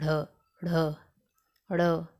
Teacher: जात व्यंजन भी कहते हैं ठीक ना द्विगुण भी कहते हैं इनका उच्चारण करते समय हमारी जीभ हमारे तालू को छूते हुए एक झटके के साथ नीचे की तरफ आती है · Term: उत्क्षिप्त व्यंजन